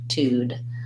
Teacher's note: the second T is the beginning of the syllable so we stay with a T sound